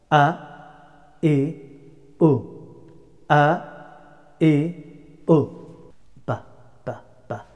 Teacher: The letter of Alif pronounced from lower part of the throat.